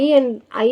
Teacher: ஐ என்ற உயிர்நெடில் வந்து தனித்து ஒலிக்கும்போது இரண்டு மாத்திரை அளவு ஒலிக்கும் அது சொல்லோட முதலிலும் இடையிலும் இறுதியிலும் வரும்போது குறைந்து ஒலிக்கும் இதான் ஐகார குறிக்கம்